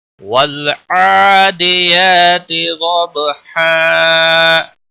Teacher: والعادیات ضبحا، ضاد موٹا بھی پڑھیں گے اور با پر قلقلہ ہوگا، اور یہاں پر وقف کی صورت میں 2 زبر 1 زبر میں بدل کر الف مدہ بن جائے گا، مد کے ساتھ وقف ہوگا۔ والعادیات ضبحا، اس وقف کو وقف بالابدال کہتے ہیں۔